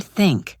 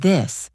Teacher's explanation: For the word think, the sound is soft. It is just air passing through. For the word this, the sound is voiced. You should feel a small vibration in your throat.